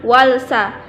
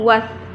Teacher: waktu kita membacanya lamnya seperti tidak ada di situ. Was, tidak ada walsa, was, langsung was. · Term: alif lam syamsiyah